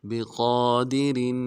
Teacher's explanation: قاف کے اوپر کھڑا زبر ہے، ایک مقدار میں کھینچیں گے۔ دال کو نرم سے ادا کریں گے، اور را کی تنوین ہے، غنہ نہیں کریں گے، یعنی غنہ اظہار ہوگا یہاں پہ۔